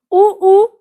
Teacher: उ ये होठ से उच्चारित होता है और इसका उच्चारण स्थान ओष्ठ कहलाता है।